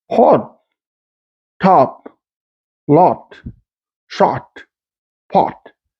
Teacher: Another aspect of Eastern New England English is the retention of a rounded vowel, which in other dialects of American English is more like a sound.